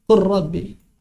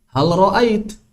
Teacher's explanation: Makanya ro bigfirli. Tapi ketika lam bertemu dengan ro, maka dia diidghamkan.